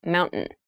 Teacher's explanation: when you pronounce this word in fast speech it sounds like mountain the t sound is reduced